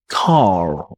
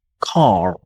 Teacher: the letter R is silent in British pronunciation, whereas in American pronunciation is totally not silent